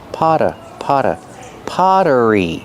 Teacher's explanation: The double T makes a fast D sound because it's between vowels.